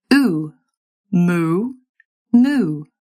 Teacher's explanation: Back in American English, we were starting this vowel with the same vowel as as in put. For RP, you'll be starting higher and further forward in your mouth.